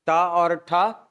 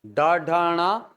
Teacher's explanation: ट और ठ अघोष ड ढ ण सघोष